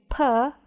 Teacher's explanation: you will feel the buildup of air which is then released when you move from the stopped to the following vowel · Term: stops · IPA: /p/